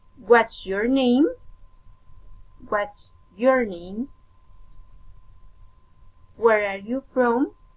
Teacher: a special question falling intonation